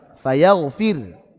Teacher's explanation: Karena waqaf. Ro sukun sebelumnya kasrah dibaca tipis.